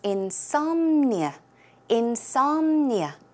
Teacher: The stress goes on som, so it's insomnia, insomnia.